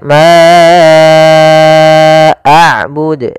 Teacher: Di sini ada bacaan Mad Jaiz munfasil yaitu panjangnya kita harus panjangkan empat harakat